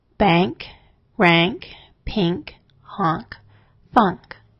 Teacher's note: In words ending in NK, N has a ng sound. This slightly alters the sound of the vowel.